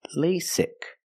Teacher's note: the first vowel is a long a like say and day